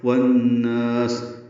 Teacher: والناس واو کو نون سے ملائیں گے، ادغام شمسی ہے. نا میں نون کو لمبا کریں گے اور سین ساکن پہ ہمس ہوگا